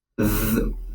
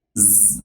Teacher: we pronounce the voiced TH sound, which is th, as Z